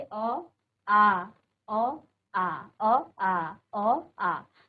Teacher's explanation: जैसे आपने कहा अ, आ, बार बार करेंगे अ, आ, अ, आ, अ, आ, अ, आ। तो आ में ज्यादा समय लगा, दुगना समय लगभग, और अ में कम समय लगा। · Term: दीर्घ स्वर